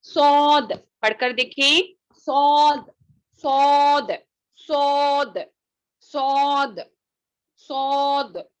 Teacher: سود کو ادا کرتے ہوئے ہماری زبان کا اوپر کا زبان کی جڑ جو ہے وہ بلند ہو جاتی ہے.